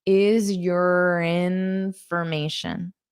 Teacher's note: you can use this R to connect to the vowel sound